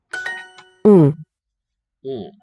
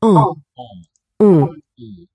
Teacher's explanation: I'm allowing air to flow through my nose. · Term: nasal syllables